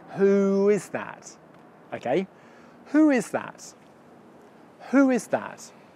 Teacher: my lips just glide in between the two vowel sounds